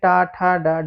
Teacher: और मूर्धा या मूर्धन्य में कौन से आते हैं? टा वर्ग के।